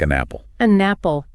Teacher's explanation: The N sound jumps over